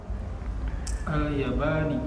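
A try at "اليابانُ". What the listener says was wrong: Kenapa baca kasrah ya? Sini sementara enggak ada yang mengkasrahkan. dibacanya yang benar apa?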